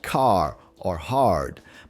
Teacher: Rhoticity is all about whether people pronounce the R sound in their accents. In rhotic accents, like most American and Irish ones, you hear the R clearly in words like car or hard, but in non-rhotic accents, which you find in many British or Australian dialects, the R gets dropped. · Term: rhotic R